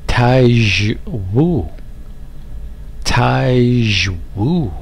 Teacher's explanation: stress on the woo